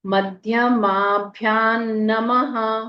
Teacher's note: अनुस्वार का उच्चारण न की आधे न की तरह · आखिर के विसर्ग का उच्चारण अह की तरह